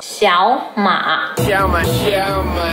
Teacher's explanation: Both of the characters are third tone, but when two third tones are together, the first third tone becomes the second tone